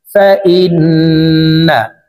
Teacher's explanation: হরকতের বামে নুনে মিমে তাসদীদ হইলে সর্ব অবস্থায় নাকের বাসি থেকে গুন্নাহ করিয়া পড়িতে হয়। এই কারণে এই হামজা তাসদীদওয়ালা নুনের সাথে 3 সেকেন্ড পরিমাণ গুন্নাহ করে ধরে রেখে পড়ব। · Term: ওয়াজিব গুন্নাহ